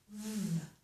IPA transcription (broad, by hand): v